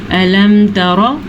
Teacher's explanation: किसी किस्म का गुन्ना, किसी किस्म का होंठों का बंद करना यहाँ पे जायज़ नहीं है। और ये तकरीबन सारे मीम के बाद जितने भी हरूफ आ जाए उन पर इनका लागू होता है, बस बा और मीम ना हो। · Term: इजहार